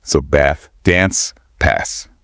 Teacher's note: Instead of that short A sound like in cat, it's often a longer, more open A sound, more like the A in father.